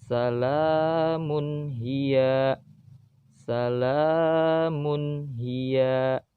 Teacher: ada tanwin bertemu dengan ha, maka harus dibaca jelas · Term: izhar